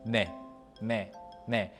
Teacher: and it even sounds like de to your year in Korean when you say it nay yes you slightly bite your tongue so in other words you put your tongue between your upper and lower teeth